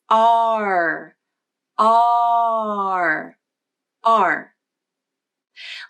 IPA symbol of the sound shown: ɑɹ